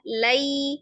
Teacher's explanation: ketika diwasal memang dia pendek, tapi pendeknya itu bukan sama dengan harokat biasa. Jadi kalau misalnya diukur dengan ketukan di atas satu, tapi di bawah dua, di bawah mad tabi'i. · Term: harfulin